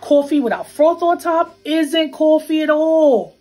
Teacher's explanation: what we call a raised vowel in words like thought and cloth. It sounds something like aw.